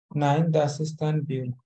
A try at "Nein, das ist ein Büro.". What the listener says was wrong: Nein, das ist ein Büro. See, you don't speak till the end. No, you have to speak till the end, guys. No slowing down in the end, no? Like this.